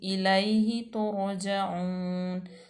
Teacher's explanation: हा जो है मकसूर है, उसके बाद तो रा जो है वो साकिन आ गया, रा साकिन माक़बल मज़मूम, तो रा जो है वो पूर पढ़ी जाएगी। तो उसके बाद जीम जो है वो मफ्तू है, वाव मद्दा और नून पे हम वक्त बिल अस्कान करेंगे, इलाही तो रोजाऊन।